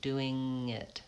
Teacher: we do link doing and it, but we don't have a G sound in there, just the NG, doing it. I have to move from to it, which is challenging because when I release my tongue, that G sound wants to come in and I have to move right into the vowel I position.